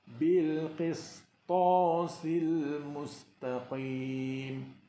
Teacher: kita bimbang sin menjadi sad kerana dipengaruhi oleh sebutan ta yang disebut secara tebal